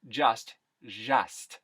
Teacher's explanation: The ZH sound, that tends to insert itself in the just sound at the beginning of a word.